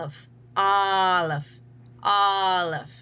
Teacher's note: So we see um the symbol for the uh uh for hut and we see the symbol for R car there as well as the a symbol represented by the Olay character at the very bottom in the low when the tongue is low in the back and we're not really having rounding here but we do have an open mouth because the lower we get the more open the mouth is you will see the all Olive, Olive, Olive, that sound coming through.